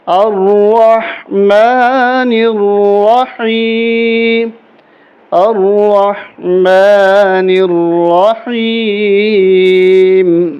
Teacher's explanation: اب اس کو پڑھیں گے الرحمن الرحیم، را کو موٹا کریں گے اور ہا کے ساتھ ملائیں گے، ہا حلق سے نکالیں گے